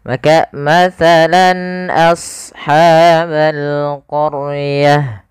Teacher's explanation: Ini karena hamzah termasuk huruf izhar, maka kita namakan hukum tajwidnya yaitu izhar halqi. Maka suara lannya harus jelas dan tidak boleh didengungkan, tidak boleh ditahan